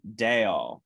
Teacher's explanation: rather than the closed a vowel it's a little more open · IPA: ɛ